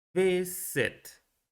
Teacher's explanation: la sílaba que contiene el estrés o la sílaba tónica es la primera, ya que decimos visit, no visit.